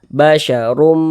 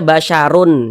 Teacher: cara membacanya bunyi tanwin dimasukkan ke huruf mim kita baca basyarum Jangan dibaca basyarun jangan tapi dibaca basyarum seperti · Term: idgham bhunah, idgham bi gunnah